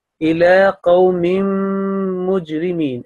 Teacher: At this point, it should be إِلَىٰ قَوْمٍ مُجْرِمِينَ, because this tanween is assimilating with the next mimushaddad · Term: assimilation with nasal sound